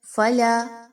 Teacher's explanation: فلا، لام الف زبر لا، الف مدہ، 1 سے 2 الف کے برابر اس کو پڑھیں گے